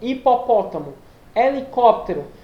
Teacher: Essas palavras começam com H, só que você não pronuncia o som do H, não tem um som vinculado ao H.